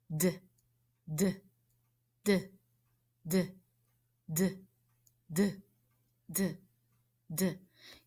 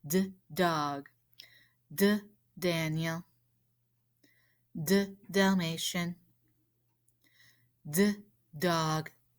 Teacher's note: I could feel the front of my tongue tapping up behind my top teeth